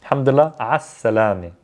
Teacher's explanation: So this sound here, as-salami, is basically ala plus il. And we're skipping the L sound in Is-salami because the S is what's known as a sun letter.